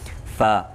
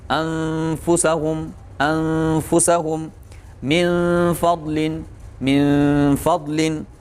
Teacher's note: فا کہاں سے ادا ہوگا، نچلے ہونٹ اور اوپر والے سامنے کے جو دانت ہیں